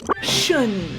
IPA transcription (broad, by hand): ʃən